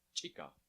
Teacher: the ejective version of the ch sound. Like the other ejectives, you can practice by just saying a hard ch by itself.